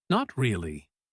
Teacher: Falling and trailing off at the very end.